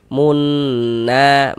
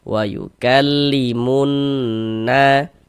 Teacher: Maka dia dibaca idgham. Maka cara membacanya dari mu langsung masuk ke huruf syamsiyah, yakni huruf nun ini. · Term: idgham syamsi